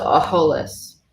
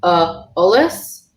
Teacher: her adds H before vowels. So it doesn't cause lenition, which is the H after a consonant that can take it.